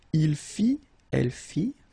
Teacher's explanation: final T not pronounced